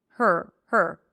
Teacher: Which actually means there is no vowel. The R eats up the vowel before. You shift from the H to the R immediately. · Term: stir sound